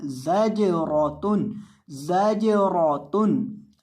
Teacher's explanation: जा के अंदर आपने सीटी पैदा करके पढ़नी है और जीम को हिलाकर पढ़ना है और रौ को भी मोटा करना है